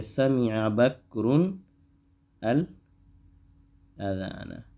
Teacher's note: تو نون قطنی آ جاتی ہے، کیونکہ تنوین کے بعد اگر لام ہے جس میں ملانا ہے تو نون بیچ میں لے آتے ہیں